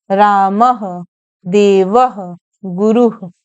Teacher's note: फिर विसर्ग, इसका उच्चारण किंचित ह के सदृश किया जाता है। इसका भी प्रयोग स्वर के बाद ही होता है, यथा रामः, देवः, गुरुः।